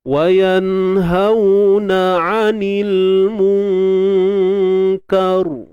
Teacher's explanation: Tapi kalau kita berhenti, ra ni akan dimatikan. So bila ra mati, sebelumnya baris atas, maka ra ini perlu dibaca dengan tebal. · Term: sukun arid